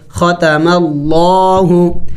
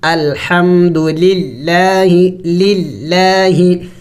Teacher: اگر لفظ اللہ سے پہلے زبر یا پیش آ جائے تو پھر لفظ اللہ کو موٹا پڑھیں گے، ختم اللہ، اور اگر لفظ اللہ سے پہلے زیر آ جائے تو پھر اس کو باریک پڑھا جائے گا